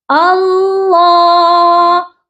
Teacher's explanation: ہم نے اس کو پر پڑھنا ہے اور اس کے اوپر کھڑی حرکت بھی ہے لام پر، تو کھینچنا بھی ہے